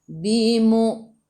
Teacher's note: Matikan dengan huruf nun. Hujung lidah menyentuh gusi atas.